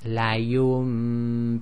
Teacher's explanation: Okay, so after the ya is a Noon Saakin, and then after the Noon Saakin is a ba. So the Noon Saakin is actually changed to a meme sakin, and that's done with nasalization. So again it's la yumbadanna. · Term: iqlab